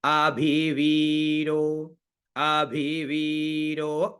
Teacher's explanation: व पे हम थोड़ा जोर देंगे क्योंकि वो दीर्घ है